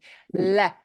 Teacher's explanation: you get more of a flick of your tongue behind your teeth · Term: the L sound